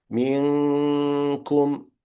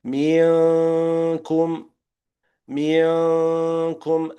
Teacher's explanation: It's just a small kasra on the mim, and then you go for the nasal part of the noon, putting your mouth on the articulation point of the kaf at the same time, which is lowered.